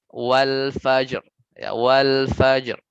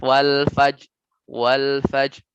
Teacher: Ro-nya hilang gitu. Ro-nya apa kurang jelas gitu, samar. Jadi saat wakaf sini ya, saat wakaf.